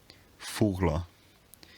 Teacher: the bilabial fricative becomes a labio dental one